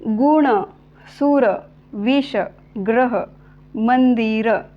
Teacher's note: या शब्दांमध्ये अकारांत तस्तम शब्दात शेवटी येणारा अचा उच्चार कसा होणार आहे, पूर्ण होणार आहे